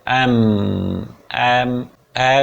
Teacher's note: one has to keep the lips tightly and allow the air to come out through the nasal passages। आपको अपने होठों को tightly बंद करना पड़ेगा पहले, फिर धीरे धीरे हवा को नेजल पैसेज से निकालना होगा, नाक के थ्रू निकालोगे। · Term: मा साउंड